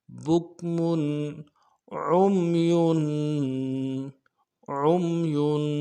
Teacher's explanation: بکمن میں جو تنوین ہے اس کو اظہار کے ساتھ پڑھیں گے چونکہ آگے حروف حلقے میں سے عین آ رہا ہے